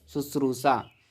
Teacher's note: शुश्रूषा में जो है दंती सा की जगह पर तालव्य सा होता है